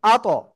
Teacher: কলকলা, ধাক্কা দিয়ে আত পড়বো।